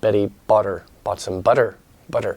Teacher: it's kind of a soft T in American English